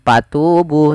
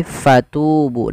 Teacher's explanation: fa alirkan nafas, karena fa punya sifat huruf hamas, yaitu harus mengalirnya nafas. Jangan dibaca dengan patubu, tapi fatubu dengan f.